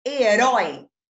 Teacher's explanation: Ele é um ditongo forte, aberto. Então, esse O aqui vai receber acento.